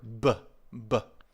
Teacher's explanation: the B sound, the b, is a bilabial, so you need to make sure you put your lips together